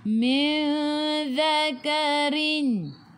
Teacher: Boleh dengung panjang bawa ke sisi huruf zal.